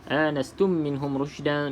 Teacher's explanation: kena dengung 2 harakat, wajibul gunnah, idgham mislain ataupun idgham syafawi, boleh sama semua.